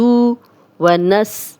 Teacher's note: سین سیٹی والا ہے